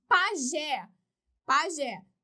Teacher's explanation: 2 sílabas, última mais forte, terminada em E, acento.